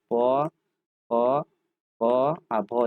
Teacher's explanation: ओष्ठ वाला भाग से हम लोग कहते हैं प